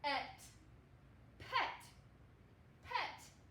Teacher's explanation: the E is going to say its short sound, which is eh, like elephant